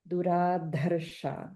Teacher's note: Just notice the Mahaprana in Duradharsha, just a little more, a slight little more emphasis there.